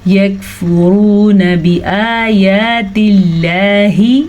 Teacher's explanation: لفظ اللہ سے پیچھے والے حرف نیچے زیر ہے تو ہم لفظ اللہ کو باریک پڑھیں گے